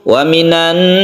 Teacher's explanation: cara membacanya sama dengan guna musyadadah yaitu membacanya itu guna atau didengungkan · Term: Idgham Syamsiah